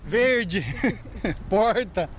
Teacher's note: Este é o R retroflexo, o popular R caipira.